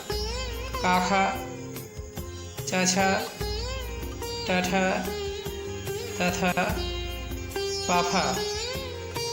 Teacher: जिन व्यंजनों के उच्चारण से स्वर तंत्रिकाएं झनकृत नहीं होती हैं उन्हें अघोष व्यंजन कहते हैं।